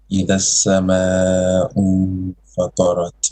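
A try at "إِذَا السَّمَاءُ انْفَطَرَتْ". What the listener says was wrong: Make your mud here a bit longer, 4 or 5 beats.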